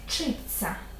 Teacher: в слові вчиться взагалі немає звука Т є ц подовжений пом'якшений звук ц